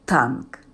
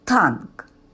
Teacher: Ви чуєте твердий приголосний Т на початку слова